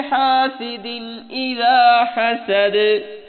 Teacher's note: حاسد کی سین بریک، سیٹی کی آواز، اذا حسد دال نرمی والی، حسد حا بریک، سین بھی بریک اور دال جو ہے یہاں قلقلہ ہوگا۔